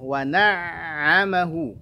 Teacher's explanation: Lalu ain punya sifat tawassut, alirkan sedikit bunyi ainnya.